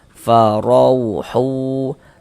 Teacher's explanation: Maka huruf wau sukunnya huruf lin. Kita baca lunak lembut.